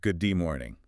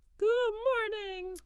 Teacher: There's no clear stop and release of air. It's more like your tongue might touch that ridge behind your teeth where the D happens, but it doesn't fully release the sound. It's like a quick check on the air flow, not a full stop.